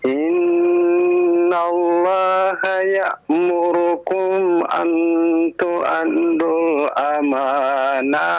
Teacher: ya'murukum pakai hamzah ya, bukan pakai ain ya. Ya dari pangkal tenggorokan.